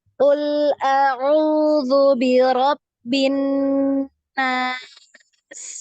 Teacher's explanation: Coba gunahnya dipanjangkan ya. Gunah ini panjang.